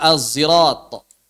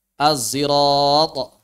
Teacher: Sod yang bercampur dengan zai. Atau zai yang tebal.